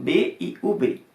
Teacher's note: E para falar em espanhol, para emitir o som de B e de UB, segundo os estudos e segundo as orientações, nós devemos produzir o mesmo som, que é o encontro dos dois lábios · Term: bilabial